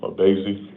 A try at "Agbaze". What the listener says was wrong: The G is silent.